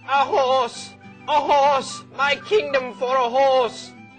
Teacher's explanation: A is the first syllable. It's unstressed. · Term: unstressed syllable